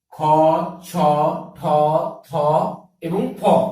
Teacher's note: যে সকল ধ্বনি উচ্চারণের সময় বেশি শ্বাসবায়ুর প্রয়োজন হয় তাকে বলা হয় মহাপ্রাণ ধ্বনি